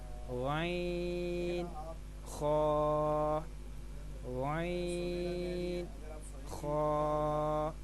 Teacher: حلق کے اوپر والے حصے سے یہ 2 حروف ادا ہوتے ہیں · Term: حلق کے اوپر والا